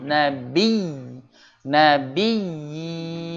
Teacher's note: jadi karena ya-nya double, jadi seringnya lahannya atau kesalahannya itu tidak dipanjangkan, ya. Padahal di situ seharusnya panjang. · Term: Mat Tamkin